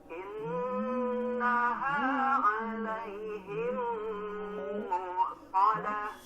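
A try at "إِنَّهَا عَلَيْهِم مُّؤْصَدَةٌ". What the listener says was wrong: Nah, sedikit lagi Pak, lebih dihentakan. Muqsadah.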